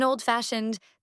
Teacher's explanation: on the second element or part of the word for instance in oldfashioned the emphasis is on fashioned